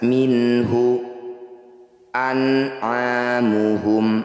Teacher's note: Cara bacanya bunyi nun sukunnya baca dengan jelas, minhu an'amuhum, tidak usah ditahan atau didengungkan. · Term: izhar halki